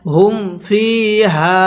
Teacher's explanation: ফি এর মধ্যে এক আলিফ টান দিব হা এর মধ্যেও এক আলিফ টান